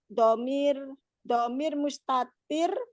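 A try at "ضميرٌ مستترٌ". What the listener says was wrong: Jangan disukun. Domirun mustatirun.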